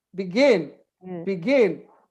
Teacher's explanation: The stress is in the second syllable.